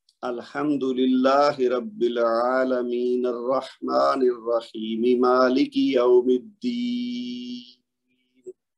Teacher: یوم الدین پہ آ کے میں نے مد عرض کیا، اس کو لمبا کیا، پیچھے لمبا نہیں کیا، دو دو حرکت دی ہیں. الرحیم میں بھی یا مد ہوئی ہے اور عالمین میں بھی یا مد ہوئی ہے، تو اس کے 2 حرکت کی ہیں.